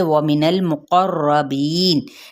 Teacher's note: वाव होंठों की ना तमाम गुलाई के साथ और नून की ज़बर को लाम के साथ, लेकिन लाम को हिलाना नहीं है। और मुक़र्रबीन क़ाफ़ हरूफ़ मुतालिया में से है।